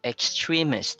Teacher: So it maintains the stress of the word extreme. So it's in the second syllable.